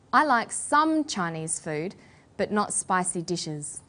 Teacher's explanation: we put the stress on the word some